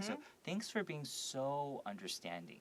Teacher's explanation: here the so can be emphasized and elongated, made longer to kind of really show that they're really being understanding.